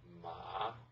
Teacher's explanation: for the falling rising tone, so the sound should be kind of like go down and up. So follow me.